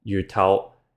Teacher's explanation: the tone changed to a falling tone instead